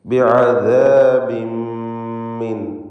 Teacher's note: ഹൽഖിയായ ഹർഫായ ഐൻ തൊണ്ടയുടെ മധ്യത്തിൽ നിന്ന് ഉച്ചരിക്കുന്നു. · അദാബിൻ എന്നതിലെ തൻവീനിന് ശേഷമുള്ള മീമിൽ പൂർണ്ണമായും ലയിപ്പിച്ച് മണിക്കണം. ബിഅദാബിൻ മിൻ ഇദ്ഗാം ബിഗുന്ന കാമിൽ.